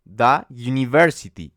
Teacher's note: esa u suena como una y University tiene como un sonido de Y entonces es un sonido de consonante